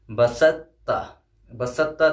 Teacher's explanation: ہم نے تا کو حذف کر دیا، سین کو ڈائریکٹ تا میں ملایا ہے